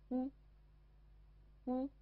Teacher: 发音的时候双唇收圆，微向前凸，舌位高抬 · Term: 合口符